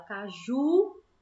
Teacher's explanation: a penúltimo né como a gente fala com a Ju né a sílaba que puxa mais é o Ju que a última sílaba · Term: oxítona